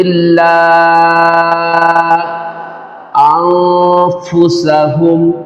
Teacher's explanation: یا 2 2.5 4 الف کھینچ کر پڑھیں گے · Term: مد منفصل